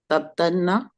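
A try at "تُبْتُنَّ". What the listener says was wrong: No. Ta should have a dhamma. Tub.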